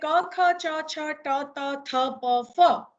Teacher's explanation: હવા છે એ નાદતંત્રીને ધ્રુજાવ્યા વિના બહાર નીકળે છે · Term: અઘોષ ધ્વનિ